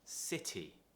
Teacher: you have the t and then you have two vowels now the important thing here is that you don't pronounce it as a d which is what americans do